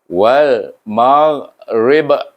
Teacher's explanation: Kenapa bunyi lantunan ba tu kuat? Kerana dia diwakafkan. Diwakafkan di sana, ba huruf qalqalah, iaitu ba itu disukunkan daripada baris depan, kita sukunkan kerana kita nak wakaf kat sini. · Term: qalqalah kubra